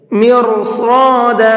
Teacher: مرصادا، یہاں پر را کو منہ بھر کے پڑھیں گے اور صاد کو بھی منہ بھر کے پڑھیں گے